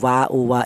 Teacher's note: Huruf wau ini dihasilkan dari kedua bibir yang renggang atau tidak nempel. · melibatkan kedua bibir, baik bibir bawah atau bibir atas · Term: huruf wawu